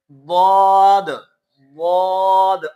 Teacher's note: یعنی زبان کا کنارہ اور اس سائڈ کے دانتوں کے اوپر والے دانتوں کے جڑوں سے، یا اس سائڈ کے اوپر والے دانتوں کے جڑوں سے، جس طرح بھی آپ کو آسان ہو اس طرح اس کے زبان کے کنارہ اوپر والے دانتوں کے جڑوں کے ساتھ یا مسوڑوں کے ساتھ لگنا چاہیے۔ ضاد، ضاد بھی نہیں ادا کرنا، دواد بھی نہیں ادا، دونوں طریقے سے غلط ہو جائے گا، مخرج بدل جائے گا۔